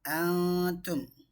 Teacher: நூன் சாக்கினாவை மூக்கால் மறைத்து இஹ்ஃபா செஞ்சு ஓதுறோம்